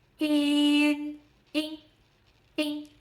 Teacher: the i here is a Mandarin i. Brighter and more forward. Start with i lips spread, then tongue tip rises to touch behind your upper front teeth.